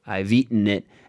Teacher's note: That is a glottal stop. There is no T right there.